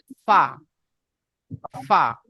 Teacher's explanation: নিচের ঠোঁটের ভিজে অংশ এবং সামনের উপরের দুই দাঁতের আগার সাথে লাগিয়ে উচ্চারিত হয় ফা।